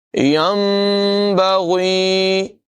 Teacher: یاد رکھیں کہ جب نون ساکن کے بعد حرف با آ جائے تو وہاں پر اقلاب ہوتا ہے، یعنی نون ساکن کو میم سے بدل کر ادا کرتے ہیں۔ یہاں پر نون نہیں پڑھا جائے گا بلکہ نون کی جگہ میم کو پڑھیں گے۔